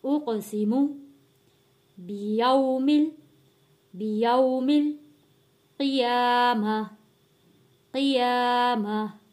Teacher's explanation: قاف موٹا پڑے جانے والا لفظ اور حروف قلقلہ بھی ہے کیونکہ قاف کے اوپر جزم ہے۔